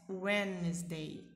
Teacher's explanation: Quando tiver um D mudo no meio de uma palavra em inglês, vocês não pronunciam esse D. Vocês prendem a ponta da língua nos dentes inferiores, os dentes de baixo da nossa boca, e aí não pronuncia o som do D.